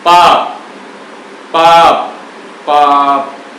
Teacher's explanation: अब बोल के देखिए पाप शब्द को, पाप, पाप, पाप। पे में से ए की ध्वनि नहीं निकलेगी, होठ जो की तो चिपके रह जाएंगे। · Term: बद्धाक्षर